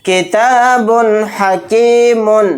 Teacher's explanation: تنوین کے بعد ہا گیا، تو یہاں پر بھی اظہار کا قاعدہ ہوگا. با 2 پیش بن کی جو آواز ہے اس کو جلد پڑھنا ہے ظاہر کر کے بلا غنہ کے